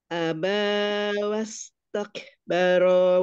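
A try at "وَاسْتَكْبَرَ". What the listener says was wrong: Mohon maaf, tadi roknya keseret. Tadi roknya keseret. Rowaka. Jadi rowa. Cepat tuh.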